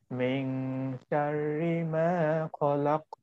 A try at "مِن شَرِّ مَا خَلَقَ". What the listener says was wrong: মিং শাররি শিনের উচ্চারণ clear হতে হবে, মিং মিং শাররি ওয়া মিং শাররি